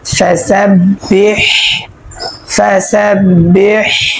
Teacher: এখানে হা যেটা আছে সেটা আমরা হলকের মধ্যখান থেকে উচ্চারণ করিয়া পড়ব। মাখরাজ হচ্ছে 2 নাম্বার মাখরাজ। · 2 নাম্বার মাখরাজ হলকের মধ্যখান হইতে আইন হা উচ্চারণ করিয়া পড়তে হয়।